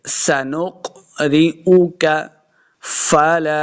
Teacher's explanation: لام کے آگے جو الف ہے اس کو 2 حرکات لمبا کرنا ہے